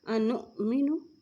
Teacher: یہاں حمزہ کے اوپر جزم ہے تو اس پہ جھٹکا دے کے پڑھیں گے